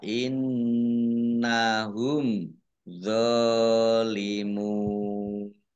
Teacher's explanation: Fa innahum, nun tasdid dibaca hunnah atau mendengung, ditahan 2 harokat. Mim sukun bertemu dengan huruf dha, bacaan izhar safawi, dibaca jelas. Dha fathah berdiri, mat tobi'i, panjang 2 harokat.